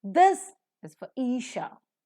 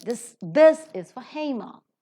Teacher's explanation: R is pronounced because it is before the word that is beginning with a vowel sound. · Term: r sound